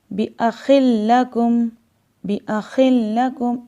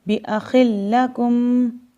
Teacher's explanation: ادغام کا مطلب کہ اس کو ہم نے ملا کے مشدد پڑھنا ہے۔ ہم یہاں پہ ملائیں گے تو صحیح لیکن غنہ نہیں کریں گے۔ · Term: ادغام بلا غنہ